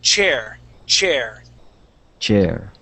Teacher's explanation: the sound is CH okay it's a short burst of air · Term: c h sound